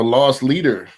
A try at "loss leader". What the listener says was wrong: Not that you're lost in like lost in space. LOSS, lost leader.